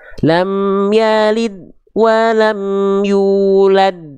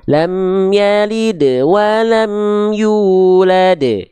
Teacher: di sini qalqalahnya qalqalah kubro. Jadi pantulannya lebih kuat sedikit. Ya, lebih kuat sedikit karena berada di akhir kalimat dan dia berhenti padanya.